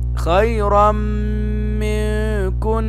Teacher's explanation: فإذا جاء بعد النون الساكنة أو جاء بعد التنوين ياء نون ميم واو، فيكون هذا إدغام بغنة، ندغم ونغن